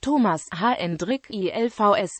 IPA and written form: 'toːmas 'hɛndrik 'ilvɛs (Toomas Hendrik Ilves)